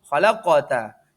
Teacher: qalqalah sughra karena ada huruf qaf bersukun dan mati di tengah kalimat